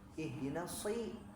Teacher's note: Ihdinas siro si, nah itu tipis, nah keliru, harusnya dia tebal.